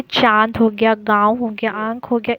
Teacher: ये सब उच्चारण नाक और मुंह से किया जाता है, नोज एंड माउथ से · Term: अनुनासिक